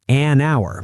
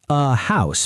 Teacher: an hour because hour is silent but a house because you hear the h